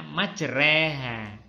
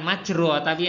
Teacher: majreha Hai kak lagi majroha tulisannya Tapi bacanya majreha bukan majroati agak dimiringkan ke arah kasrah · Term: imalah